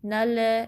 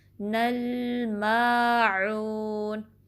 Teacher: لام پہ کلکلا نہیں کرنا، باؤنس نہیں کرنی آواز. نل ایسے نہیں، ٹھیک ہے، سٹیبل رکھیں گے.